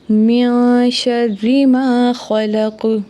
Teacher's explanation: یہاں پہ نون کے بعد شین ہے تو یہاں پہ اخفاء ہوگا، یعنی آواز ناک میں چھپائیں گے، کیونکہ شین نہ تو حروف حلقی میں سے ہے، نہ حروف یرملون میں سے ہے، اور نہ ہی حرف اقلاب میں سے ہے۔